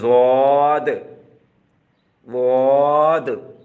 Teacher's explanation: ضاد بہت ہی زیادہ موٹی آواز اور نرم، اور یہ ہمیشہ ٹھہراؤ اور جماؤ سے نکلتی ہے